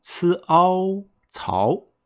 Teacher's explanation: The Ao has the second tone, which is ascending.